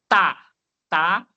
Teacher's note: O som parou meio no meu dente, meio na língua